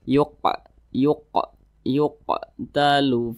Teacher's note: ini tergolong kepada Qalqalah kecil atau Qalqalah sugro karena dia itu ber ada di tengah kalimat